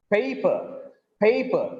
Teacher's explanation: Here, the voice is raised. Prominence is given on pay. Voice is raised on pay, and it has become little longer also.